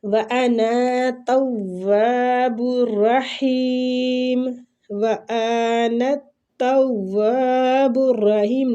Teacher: نون کو تا کے ساتھ، تا کو واو کے ساتھ ملاتے ہوئے واو کو کھینچیں گے، الف مد ہے، ٹھیک۔